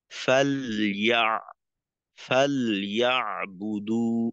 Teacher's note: তো এই জন্য লামের জজমটাকে স্পষ্ট করব, যেন মাখরাজ থেকে পৃথক হওয়ার সময় কোনো আওয়াজ না হয়, আর একটু সময় দেব।